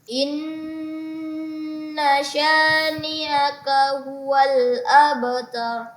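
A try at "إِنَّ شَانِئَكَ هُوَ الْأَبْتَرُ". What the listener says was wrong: Ya, kemudian huwal, hi, hu. Ya, ha-nya dijelaskan lagi.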